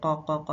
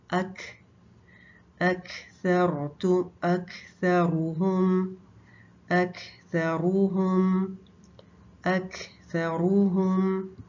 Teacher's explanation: کاف باریک لیٹر ہے اور اس میں سانس چلتا ہے، تو اس کو آپ نے لائٹ پڑھنا ہے. قا، قا، قا ایسے موٹا کر کے نہیں پڑھنا.